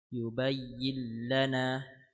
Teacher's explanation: نون ساكنة مدغمة في اللام المفتوحة بغير غنة